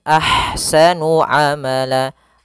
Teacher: Kemudian pada lafal ahsanu, di sini ada ha yang berharakat sukun, maka dinamakan dengan ha hamz. Alirkan nafasnya, kemudian baru dibaca dengan sa-nya.